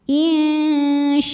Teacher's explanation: Insya'a, a jika berhenti hukumnya mad iwad karena ada harokat fathah tain yang diberhentikan. Cara bacanya dipanjangkan 2 harokat tanpa ada bunyi n-nya.